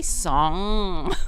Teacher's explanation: the top of the tongue goes up on the soft palette and it touches in the back of the mouth